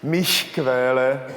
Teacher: after the vowels “i” and “e”, the sound is more to the front of the mouth than in Czech